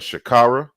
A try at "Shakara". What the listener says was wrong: Greetings, it's Shakara. yeah, it's a slight different emphasis on the A's.